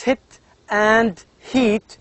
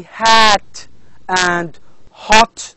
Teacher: when you pronounce hit and heat you can feel that the the mouth is closed but when you say hat and hot you can feel that your tongue or your mouth is open wider